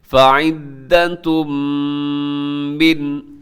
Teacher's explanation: فعدۃ میں تنوین ہے، دو پیش کی تنوین، اور اس کے بعد کیا آ رہا ہے جی؟ میم آ رہا ہے، تو آپ یہاں پر ادغام کریں گے